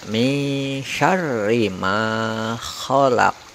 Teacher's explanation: Selanjutnya yang terakhir huruf qalqalah qaf pada kata khalaqa. Ini nanti dimatikan, kemudian diikuti getaran atau pantulan, ada bunyi setelah huruf qaf, sehingga dibaca min syarri ma khalaq. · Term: qalqalah kubro